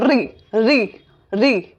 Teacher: कंपन जात कंपन जात भी बोल सकते हो या कंपन स्वर जिसको बोलते हो हमारी जीभ में थोड़ा सा कंपन होता है।